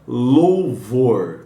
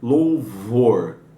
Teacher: O LAMED é o som de L, e esse som ele escapa pelas laterais da língua